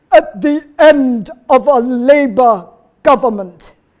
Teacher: So you get that kind of level of constriction. She's also glottalizing. So there's a constriction going on within her throat.